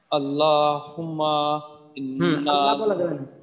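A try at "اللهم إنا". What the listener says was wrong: আল্লাহ বলা যাবে না। আল্লাহ বলা যাবে না, কারণ আল্লাহ শব্দের আগে কি আসছে? জবর আসছে।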